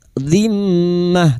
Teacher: mim yang bertasdid ghunna musyadadah kita dengungkan selama tiga harakat. Dzimmah ta marbutah yang berharakat fathah tanwin dan dibaca waqaf maka dibaca sukun walaimmah.